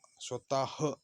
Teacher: विसर्गाचा उच्चार ह्या वर्णाचा हिसडा घेऊन देऊन केलेल्या उच्चारासारखा आहे